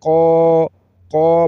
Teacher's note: برابر کھینچ کر پڑھیں گے تاکہ الف کی اواز نکلے قا قا پڑھنا ہے کا نہیں پڑھنا وگرنہ ڈنڈے والا کاف پڑھا جائے گا جو کہ باریک ہے · قاف کے اوپر زبر ہے اس کو پر کر کے پڑھیں گے اور اس کے بعد الف ا رہا ہے تو قاف کے